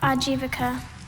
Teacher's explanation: there's still that schwa sound in the next to last syllable, that 3rd syllable